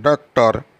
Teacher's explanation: ये इसका उच्चारण अ नहीं है कि आ भी नहीं है, अ और आ के बीच